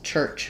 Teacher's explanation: So I'm stopping the air initially, but then it comes out in a burst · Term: affricate sound